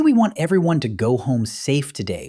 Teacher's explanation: This is a deep, smooth, downward-inflecting voice. You do not speak from your throat. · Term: late-night FM DJ voice